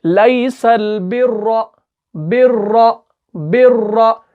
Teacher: बिर्रा, रॉ, हम मुंह को खोल रहे हैं पूरा, यानी मुंह भर के हम इसको पढ़ते हैं। इसी का मतलब है कि हम इसको पुर पढ़ रहे हैं, यानी मोटा पढ़ रहे हैं।